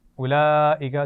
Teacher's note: बड़ी मद है, खूब खींच कर पढ़ेंगे